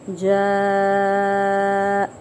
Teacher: مد واجب متصل یعنی کہ بڑی مد ہو رہی ہے، 4 سے 5 الف کے برابر کھینچیں گے